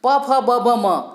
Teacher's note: होंठों का आपस में स्पर्श होता है तब ये ओष्ठ ध्वनियाँ निकलती है